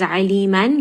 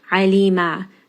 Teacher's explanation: we will substitute the fathatain for an alif two-count med, such as aliman gets turned into alima. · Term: substitution med